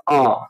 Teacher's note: Next question देखेंगे, question number 28 देखेंगे, निम्नलिखित में से कौन सा पश्च स्वर है, यानी कि जिसके उच्चारण में मुंह के जो पिछला हिस्सा जो जबान का है वो यूज होता है। तो आप देख रहे हैं उच्चारण से पता चल रहा होगा, आ बोलते हैं तो पीछे जो से जो है आवाज आती है, और ई ऑप्शन है, जा ऑप्शन है, ढा ऑप्शन है।